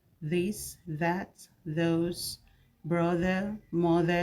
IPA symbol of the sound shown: ð